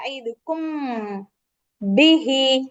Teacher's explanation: ஒரே மஹரஜ் இருக்கிறதுனால நம்ம என்ன பண்ணுவோம் மீமை பாதியா ஹைட் பண்ணி ஓதணும் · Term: இஹா ஷபவி